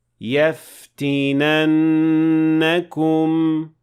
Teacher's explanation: جب آپ پورا لفظ ادا کریں گے تو آپ کو 2 حرکات کے برابر غنہ کرنا یاد رکھنا ہوگا۔